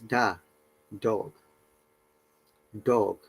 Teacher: sound D is a voiced alveolar stop consonant